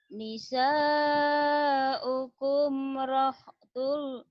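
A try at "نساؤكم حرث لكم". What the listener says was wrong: Harsul terbalik. Harsul. Nisa,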